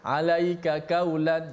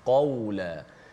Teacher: Jadi kalau kita nipiskan kaulan, qaf itu, automatik dia jadi berpindah, tukar jadi huruf kaf